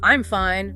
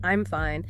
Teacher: Like a cheerful I'm fine versus like a flat, monotone I'm fine.